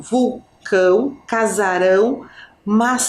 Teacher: já montou vulcão Casarão mã essa nasalidade então nessas palavras ali o a não tem som aberto Nem som fechado é um som que sai como se fosse pelo nosso nariz